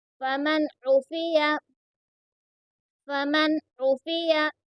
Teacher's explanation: اب دیکھیے یہاں پر اظہار ہو رہا ہے کیونکہ نون ساکن کے بعد میں عین آیا ہے، اس لیے یہاں پر اظہار ہو رہا ہے، اور عین کو درمیان حلق سے ادا کریں گے